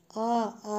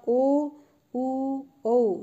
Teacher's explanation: वृत्तमुखी अर्थात जो हमारे होंठ हैं वो जो गोल हो जाएंगे। ऊ बोलते समय हमारे होंठ जो है वो गोल होते हैं, वृत्ताकार रूप में लेते हैं।